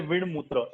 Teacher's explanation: अनुनासिक व्यंजन आया है, तो इसलिए ट का कन्वर्ट हो गया ण में। तो इसलिए विण मूत्र ऐसा उसका जो है, जब हम श्लोक में कहेंगे तो ऐसे होता है।